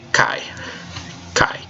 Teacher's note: about here was distinctive vowel sounds and it turns out that these two vowels are pronounced together cuz they're a diphthong they make the long I sound